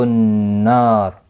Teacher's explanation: نون مشدد پر غنہ ہوگا، الف مدہ بھی ہے، ایک الف کی مقدار کے برابر کھینچ کر پڑھیں گے۔ وقف کی صورت میں را ساکن پڑھا جائے گا، پر بھی پڑھا جائے گا۔